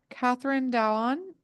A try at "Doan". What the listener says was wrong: It's actually Doan. It's the letters are reversed. It's DOAN.